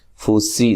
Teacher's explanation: سین باریک سیٹی سے